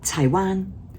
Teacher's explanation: Taiwan one is high tone number one.